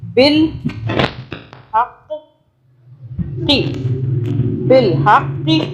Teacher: قاف کو موٹا پڑھنا ہے، ہاں کو حلق سے پڑھنا ہے